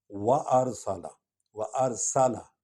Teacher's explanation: سین سیٹی کی آواز نکلے گی